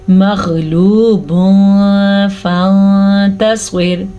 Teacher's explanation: سواد کو پر پڑھنا ہے، را کو باریک پڑھنا ہے کیونکہ را ہے ساکن اور ساکن را سے پہلے ہے زیر، اسی لیے را باریک پڑھی جائے گی.